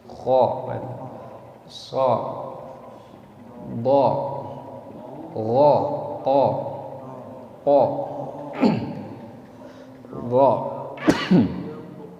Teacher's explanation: Disebut huruf isti'la karena dia secara bacaan makhraj lidahnya dia terangkat. Makanya isti'la itu artinya terangkat.